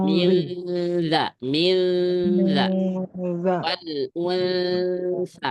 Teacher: lidahnya langsung ke ujung dua gigi seri aja enggak masalah. Liwanzi langsung nempel di situ. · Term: dzal dan tsa